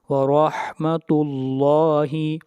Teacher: لفظ اللہ کو بھی موٹا پڑھا جائے گا، لفظ اللہ سے پہلے پیش آ رہی ہے